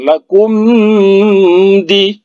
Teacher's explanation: Lakum jangan didengungkan, lakum di, ya, jangan didengungkan karena dia bertemu dengan huruf dal